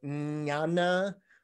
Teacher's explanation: you are placing your tongue at the top back of your mouth and pointing at your cerebrum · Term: cerebral